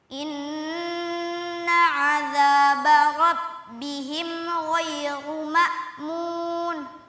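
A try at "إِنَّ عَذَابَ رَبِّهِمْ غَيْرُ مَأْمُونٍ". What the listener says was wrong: Sempurnakan kasrohnya. Inna. Coba.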